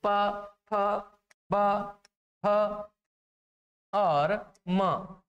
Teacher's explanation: आप जब इस प वाली लाइन का उच्चारण करते हैं तो साथियों दोनों होंठ आपस में स्पर्श करते हैं। जब इनको स्पर्श करने से ये ध्वनि जो है उच्चारित होती है, जैसे प फ ब ह और म।